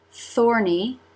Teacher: Tongue through the teeth for the th. Tongue up to make the n.